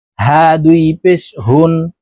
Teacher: হলুকের মধ্যখান থেকে হা হরফের উচ্চারণ করব